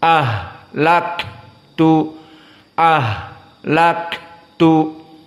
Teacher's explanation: maka ha dan Kaf sama-sama hams